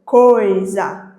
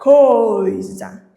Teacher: Eu tenho o O, fonema vocálico o e tenho o a semivogal I. Percebam que o som dessa semivogal é menos evidente em relação à vogal O